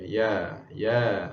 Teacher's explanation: ya alif ini adalah mat asli. Jadi ianya dibaca dengan dua harakat sahaja.